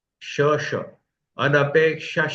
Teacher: अनपेक्ष विसर्ग और उसके बाद श है, इसलिए वहां श का डबल उच्चारण होगा